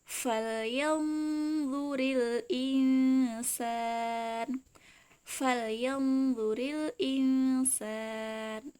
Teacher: Ya, yanzu. Jadi nun sukunya sudah tebal bertemu huruf dha ya.